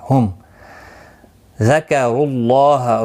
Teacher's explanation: را پیش کی وجہ سے پر پڑھا جائے گا، اللہ کا لام پیش کی وجہ سے پر پڑھا جائے گا، را پر پڑھا جائے گا پیش کی وجہ سے.